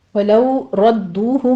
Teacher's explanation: وَلَوْ رَدُّوهُ میں لو میں واو لین ہے، را مفخم پڑھتے ہوئے دال کے پر تشدید ہے، سختی کیجیے، آگے واو مدہ ادا کریں گے، دونوں ہونٹوں کو گول کرتے ہوئے 2 کاؤنٹ کر لینا ہے